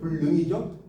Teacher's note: 리을이 니은과 만났을 때 리을의 영향으로 니은이 리을로 바뀌어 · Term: 유음화